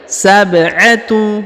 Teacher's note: huruf ba perhatikan berharokat sukun. Ya, karena berharokat sukun maka dia dibaca pantul ya. Karena huruf ba berharokat sukun adalah salah satu daripada huruf-huruf pantul ya.